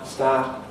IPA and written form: staːt (start)